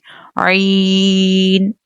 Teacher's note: عین comes from the middle part of the throat.